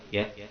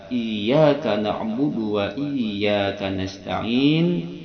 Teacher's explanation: Tengah lisan disentuhkan dengan langit atas tuh iya. Dengan tasdid. Karena kalau tanpa tasdid itu maknanya akan lain.